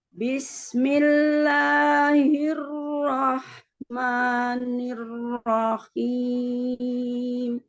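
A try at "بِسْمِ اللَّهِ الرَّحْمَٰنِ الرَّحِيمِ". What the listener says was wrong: La-nya jangan diangkat. Kalau mau diayun, dimanya.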